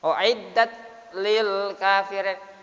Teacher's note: Keluar desirannya S-nya, tapi tidak terlalu seperti sa.